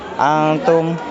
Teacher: nun mati atau tanwin bertemu dengan huruf Kaf dibaca samar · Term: ikhfa